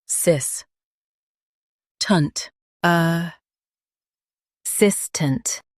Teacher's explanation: Stress sis and keep tunt light